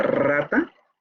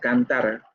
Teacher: La vibrante múltiple, de rata, y la vibrante simple de cantar. Ahí se dan cuenta, es mucho más relajado el sonido.